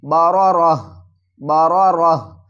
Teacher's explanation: اب جب ہم وقف کریں گے تو اس گول تا کو ہائے ساکنہ میں تبدیل کر دیں گے۔ · جب ہم وقف کریں گے تو ہائے کو ہم ساکن پڑھیں گے